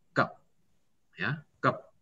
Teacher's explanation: kalau misalnya dia menjadi huruf yang paling akhir di satu kata, dia paling akhir, vokal E-nya hilang. Jadi nggak dibaca ke B, tapi kep aja.